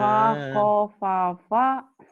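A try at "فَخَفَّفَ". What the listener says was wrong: Bukan Pak Ako atau emang orang Jawa. Kho. Khoir. Kho. Ngorok. Fakhofafa.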